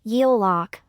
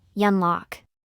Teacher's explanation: the final consonant, neun, of the first syllable is influenced by the initial consonant, ryul, of the second syllable, resulting in the consonant, ryul.